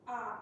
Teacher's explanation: Tone 3, A, has a mid to low contour.